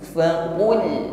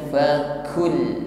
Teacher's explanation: Huruf q sifatnya syiddah, menekan. Jadi tidak diucapkan huruf qaf ini dengan lemah, bukan ku tetapi faqul, bukan fakul.